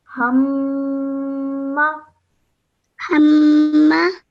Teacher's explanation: when I join the meme to the ha, I do so holding the nasal sound in my nose for 2 seconds